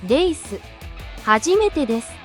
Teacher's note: with the e vowel being elongated between de and su. You could try elongating the sound between de and su while adding a slight trembling effect to your voice.